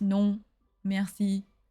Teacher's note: nasal sound there's actually an n on the end of that the O and the N make that nasal sound